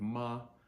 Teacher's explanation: the way that I said Ma I'm using first tone so first tone is from an English speaker's perspective is kind of a sing songy tone it's a little bit higher than we normally speak